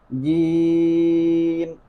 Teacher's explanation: زبان کے درمیان سے اور تالو کے وسط دونوں کے درمیان سے ادا کریں گے جیم